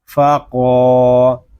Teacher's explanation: یہاں قاف حروف مستعلیہ میں سے ہے، اس کو پوری یعنی موٹا پڑھیں گے